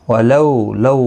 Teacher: واولین ہے تھوڑا نرمی کے ساتھ ادا کریں گے